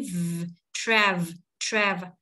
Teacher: Âm V, để hai răng cửa chạm môi dưới.